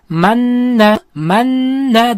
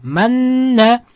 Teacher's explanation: sukunlik nun harfidan so'ng yana bitta nun harfi kelib qolsa, ikkita nunni birlashtirib g'unna bilan o'qiymiz. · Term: g'unnali idg'om